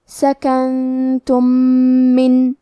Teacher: ہم میم ساکن کو دوسرے میم میں ملا کے ایک ہی میم غنہ اور تشدید کے ساتھ پڑھیں گے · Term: ادغام متماثلین صغیر